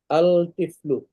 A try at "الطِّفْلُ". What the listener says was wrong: এখানে লাম উচ্চারণ হবে না আত্তিফলু আত্তিফলু